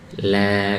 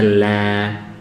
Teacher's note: Huruf lam tipis, istifal, turun, suaranya turun. Ya, bukan la ini naik, la keluar, turun.